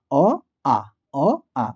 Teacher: দেখবে কন্ঠের কাছে চাপ পড়ছে তাই এটাকে কণ্ঠ বর্ণ বলা হচ্ছে